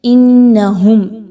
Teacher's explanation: نون مشدد ہونے کی وجہ سے حمزہ اور نون کی آواز کو آپس میں مضبوطی کے ساتھ ملائیں گے اور نون کی زبر کو ادا کریں گے۔